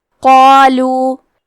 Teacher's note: کلمت قالو میں قاف ہے اور اس کے بعد مد الف ہے تو ہم یہ دونوں حرف کو بھاری آواز میں پڑھیں گے